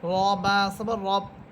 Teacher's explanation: লাম লামসের লিল লাম খারা আছে বর লা লিল্লাহ হাসের হি লিল্লাহি আলহামদুলিল্লাহি রবা রব। এখানে র হরফ এটা মোটা হবে কারণ র হরফের উপরে আছে জবর